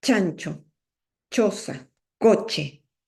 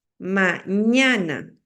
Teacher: Entonces tenemos tres sonidos palatales, que son la che, la y y la ñ.